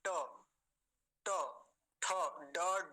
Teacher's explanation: ये सारे जो वर्ण है ये कैसे हैं, मूर्धन्य है, मूर्धा से बोले जाते हैं।